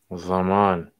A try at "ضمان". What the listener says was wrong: أيوة، لا مثل الظاء، تنطق الضاد، الضاد ينطق دائما ضاء، كتبتها بشكل صحيح لكنها لا تنطق.